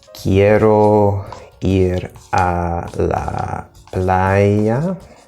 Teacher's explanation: each syllable is approximately the same length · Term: syllable timed